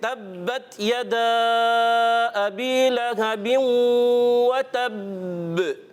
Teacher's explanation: وتب تھوڑا پکڑ کر پھر چھوڑنا ہے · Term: مشدد کلکلا